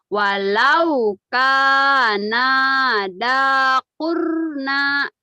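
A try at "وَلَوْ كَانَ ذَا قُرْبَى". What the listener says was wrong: Walau kana. Nanya pendek. Nanya pendek. Walau kana dha kurba. Walau kana dha kurba. Walau kana dha kurba.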